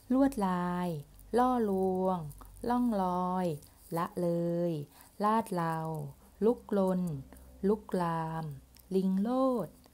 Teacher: การออกเสียงให้อ่านปกติเลยนะคะไม่ต้องกระดกลิ้นเนาะ